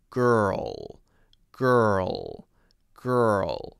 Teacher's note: There needs to be more of an R there. Right? We have to have an R. The tongue needs to roll up. And then there has to be an L at the end.